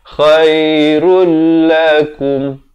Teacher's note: Daripada perkataan ini ra tandui di depan khairun. Tapi datang lam kena masuk tanpa dengung jadi rul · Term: idgham bila gunnah